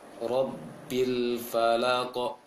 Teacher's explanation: Jangan ditahan qafnya baru dipantulkan, tapi langsung mantul. Hanya saja dia harus jelas. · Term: qalqalah sedang